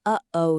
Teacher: It's made when you stop the air in your throat for a split second.